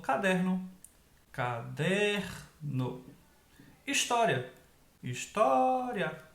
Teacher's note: a penúltima sílaba é mais forte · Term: paroxítonas